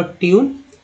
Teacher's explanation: अब ब्यूटी पुट में है ना, ब्यूटी बट में यू का उच्चारण अ के रूप में, पुट में यू का उच्चारण जो है ऊ के रूप में हो रहा है। टी यू यानी ट्यून में यू का उच्चारण जो है ई यू के रूप में हुआ